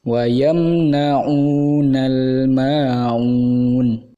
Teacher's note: lemnya tidak boleh Qalqalah atau dipantulkan